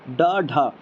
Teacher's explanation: ड ढ ये अगर बोलेंगे तो हमारी जवान मोड़ी मुड़ रही है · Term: मूर्धन्य व्यंजन